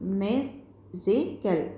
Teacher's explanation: ক'বলৈ বিচৰা হৈছে যে magical wordটো তিনিটা সিলেবলছ আছিল magical আৰু আমি প্ৰথম সিলেবলটো বেছি জোৰ দি উচ্চাৰণ কৰোঁ